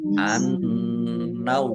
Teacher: nun tasdid bacaan Anunah dibaca mendengung ditahan biar tampak dengunannya